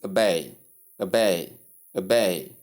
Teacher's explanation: Tip stress is on the second syllable · That is the schwa sound with bay combined. So stressing the first syllable is wrong